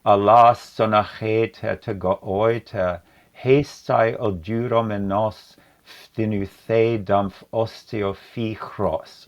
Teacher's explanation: So the line is loaded with all these aspirated consonants, ch, f, sh,